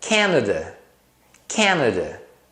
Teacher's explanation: A primeira sílaba, o can, é a sílaba tônica. Então você pronuncia esse A com clareza. Nesse caso, com o som de A. Can. As outras você reduz para o schwa.